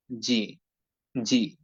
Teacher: যদি বরাবর জিহ্বার মধ্যখানকে উপরের তালুর সঙ্গে না লাগায় বাংলার মত করে সাধারণভাবে যদি বলি তাহলে উচ্চারণটা হবে জি